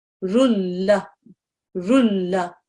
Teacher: the nasal sound is dropped and you read this as if there was just a single